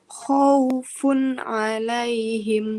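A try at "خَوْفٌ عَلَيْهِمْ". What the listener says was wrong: Jangan buru-buru Bun, nunnya dialirkan dulu. Khaufun alaihim. ingat ya, setiap huruf memiliki satu harokat, kita harus kasih haknya ya, jangan terburu-buru.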